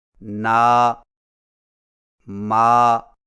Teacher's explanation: نون و میم کے کھڑے زبر کو پڑھتے وقت ہاں کی طرح ناک میں آواز نہ لے جائیں، لہذا نا، ما کو اس طرح ناک میں پڑھنا، نو، مو غلط طریقہ ہے۔